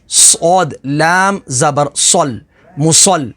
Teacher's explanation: صاد حروف مستعلیہ میں سے ہے تو اسے پر یعنی موٹا پڑھیں گے، اور لام کے اوپر تشدید ہے تو تشدید والے حرف کو 2 دفعہ پڑھیں گے۔